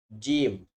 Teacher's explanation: makhraj huruf Jim yaitu adalah bagian tengah lidah dan bagian tengah langit-langit mulut paling atas